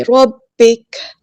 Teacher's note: با جو ہے وہ تشدید والے ایک بار ساکن کر کے ایک بار حرکت کے مطابق پڑھیں گے · ہم یہاں پہ وقف کریں گے تو کاف کو ہم ساکن کر دیں گے